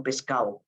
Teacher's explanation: la d intervocálica se pierde